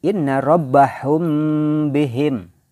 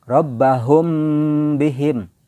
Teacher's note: Idgham dengan izhar ya jadi membacanya Inna rabbahum bihim jadi samar mim sukun dibaca samar tidak terlalu izhar dan tidak terlalu idgham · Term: Ikhfa Syafawi